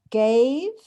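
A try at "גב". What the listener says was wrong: You got the letters right, but not the vowel.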